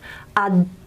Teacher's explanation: the air is stopped. There is complete closure in the oral cavity. Up, air can't escape. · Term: alveolar stops